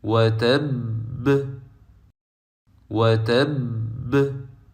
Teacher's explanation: we hold the first letter of the mushaddad letter and pronounce the second letter with Qalqalah.